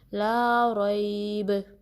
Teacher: با پہ آپ جب سٹاپ کریں گے تو آپ نے کلکلا کرنا ہے، یعنی آپ کی آواز جو ہے باؤنس ہوگی